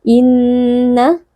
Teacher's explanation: tashdid dibaca dengan gumaman yang panjang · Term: wajibul ghunnah